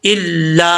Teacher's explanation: इल्ला स्वैहतन वाहिदा, यहाँ पर बाज़ औक़ात लोग जो है वो इला पढ़ते हैं, लाम के ऊपर शद्द है, हमजा लाम ज़ेर, इल लाम अलिफ ज़बर ला, इल्ला। जिस हर्फ के ऊपर शद्द वो हर्फ 2 दफ़ा पढ़ा जाता है, तो लाम को 2 दफ़ा पढ़ेंगे। इल ला, लाम के आगे अलिफ है, एक अलिफ की मिकदार, इसको लंबा करेंगे।